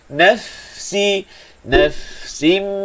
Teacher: Sempurnakan hamas pada huruf fa, panjang bunyi dia.